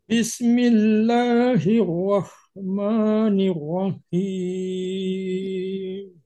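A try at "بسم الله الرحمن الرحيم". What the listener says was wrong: Sedikit sinnya juga, sinnya tidak boleh terpantul. Bism, tidak ya. Bismi, gitu aja.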